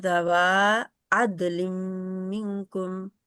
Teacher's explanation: واؤ جو ہے اس کا مد لیٹر ہے، اس کو 2 حرکات لمبا کریں